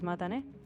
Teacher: Japanese doesn't have that TH sound, so you heard me say mata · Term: clear T sound